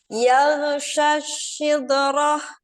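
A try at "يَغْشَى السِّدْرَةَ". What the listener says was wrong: Oke, goinnya agak mantul memang. Coba syas. Dari sya, jadi sya langsung ke sin. Syas.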